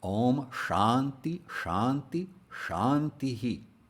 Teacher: If the dot under the H appears at the end of a word at the end of a line, then a short version of the vowel that precedes the H is echoed back. That's why, even though there's a dot under the H in each instance of Shanti, because that's how it's properly spelled, this is pronounced Om Shanti Shanti Shantihi.